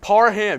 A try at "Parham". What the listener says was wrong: You keep on saying Parman. But you say it, it's like you say it differently. When you say it, it sounds like Parham.